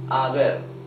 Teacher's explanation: in Spanish, letter H is totally mute. So, we don't pronounce the H.